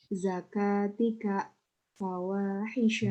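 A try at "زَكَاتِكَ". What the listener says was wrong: Zakatika. Kurang panjang.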